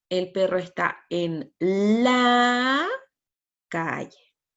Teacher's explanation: esta prosodia debe ser ascendente y expectante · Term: inducción